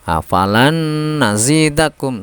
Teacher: Suara nun yang pertama yang semestinya disukun itu hilang karena masuk pada nun yang kedua. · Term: memasukkan dengan mendengung